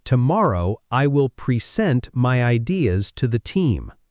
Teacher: When the stress moves to the second syllable, pre-sent, it becomes a verb. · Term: stress on the second part